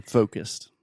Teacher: With the first O sound in the word focused, this is a pretty intense moving vowel. So you really want to start with the O, and then move that into a U.